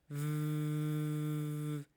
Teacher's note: the sound V, on the contrary, this is a continuous sound. I can make it last.